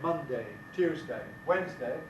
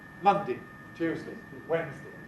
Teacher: We have a number of words in English where you can choose between two pronunciations, one of which has a strong vowel and the other of which has a weak vowel. So the days of the week can either be said with day, strong, at the end, or with di, weak